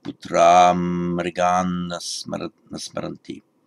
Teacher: And applying sandhi, so the long a with visarga, putra, followed by the voiced consonant, it just drops the visarga